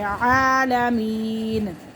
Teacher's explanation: عین کو ایک الف کے برابر کھینچ کے پڑھیں گے